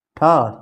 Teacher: ठा से ठटेरा वाला ठा महाप्राण है